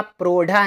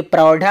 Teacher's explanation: गुण ना होकर वृद्धि हो जाती है, यानी गुण ओ ना होकर औ हो जाता है